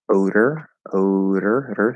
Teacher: so it's flap d to er